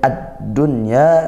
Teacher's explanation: Al bertemu huruf dal sehingga ini huruf syamsiyah, maka dibaca idgham, masuk langsung ke huruf dal. Nah, ditekan dalnya tasydid, lanjut bertemu huruf nun sukun. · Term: idgham syamsiyah